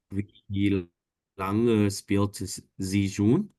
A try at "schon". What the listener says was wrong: schon, schon, bukan schön, tapi schon.